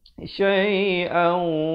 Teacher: Didengungkan 2 harakat. Masuk beserta dengung. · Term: idgham bi gunnah